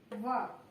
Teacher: और इसी तरह से दंतोष्ठ, व, दंतोष्ठ मीन्स दांत और ओठों से बोला जाए, व बोलने में निचला ओठ ऊपरी दांतों से टच करेगा तो व बोलेगा।